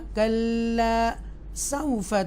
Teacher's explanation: کلا تھوڑا سا ایکسٹرا سٹریس کے ساتھ لام کو پڑھیں گے، الف بھی ہے تو تھوڑا سا لمبا کریں گے